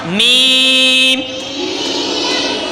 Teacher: دونوں ہونٹوں کے خشک حصے سے ادا ہوتے ہیں۔ میم، یہ خشک حصے جو باہر والے ہیں نا یہ آپس میں لگتے ہیں تو میم میم۔